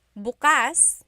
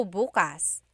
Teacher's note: If you say bukas, emphasis is on the first syllable. that means tomorrow.